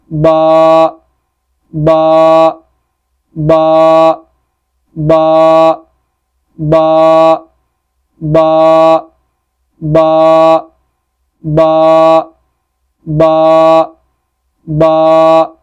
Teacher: बा दोनों होंठों के तर हिस्सों से अदा होता है